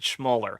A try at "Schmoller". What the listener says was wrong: Schmüller. Yeah, with the OE there.